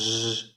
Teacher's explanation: quindi è una S sonora, una sibilante sonora